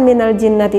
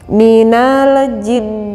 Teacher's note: Nun yang mati yang disamarkan pembacaannya yang keluar dari rongga hidung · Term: gunnah